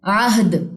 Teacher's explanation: دال کی جزم پہ عین کی زبر سے سپورٹ لیتے ہوئے یہاں پہ کلکلا کرنا ہے